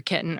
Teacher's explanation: This is prime territory for /t/ to be realized as a glottal stop, so that’s what many speakers do. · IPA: ki[ʔn̩]